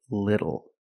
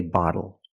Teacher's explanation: When you see TLE or TTLE, phonetically the T is between vowels. And for this reason, the T changes to a fast D in American pronunciation.